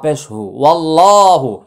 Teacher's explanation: আল্লাহ শব্দের উচ্চারণ মোটা হয়েছে